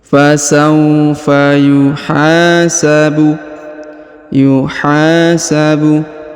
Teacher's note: Huruf ha dipanjangkan dua harakat karena di depannya terdapat Alif